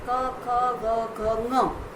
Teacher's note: इतना बोलने के लिए हमें कंठ पे प्रेशर आता है, हमारे गले पर जोर पड़ता है